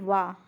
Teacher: केवल वा हमारा दंत और ओष दोनों से उच्चारित होता है